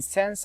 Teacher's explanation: In /sens/ the tongue-tip is lowered slightly at the same time as the soft palate is raised to give the /s/ friction